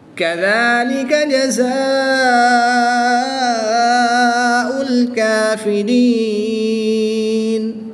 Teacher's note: الف سے پہلے حرف پر زبر ہے تو یہاں پر الف مدہ ہوگا، الف مدہ کے بعد حمزہ اسی کلمے میں ہے تو یہاں پر مد متصل ہوگی، 3 سے 5 الف تک کھینچ کر پڑھیں گے۔ نون کی زبر کو وقف میں ساکن کر دیں گے، جب نون ساکن ہو جائے گا تو یہاں پر یا مدہ کے بعد نون ساکن آ گیا تو وقف کی حالت میں یہاں پر مد عارض ہوگی، 2 سے 3 الف تک کھینچ کر پڑھیں گے۔